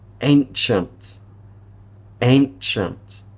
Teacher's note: Ch. The CI is giving us a ch sound here.